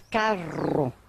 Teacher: Este é o R retroflexo, o popular R caipira.